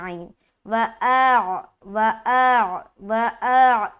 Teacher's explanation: ऐन अदा नहीं हुआ जबकि ऐन भी अदा करना और ऐन का मखरज क्या है? वस्त हलक तो हलक से निकालेंगे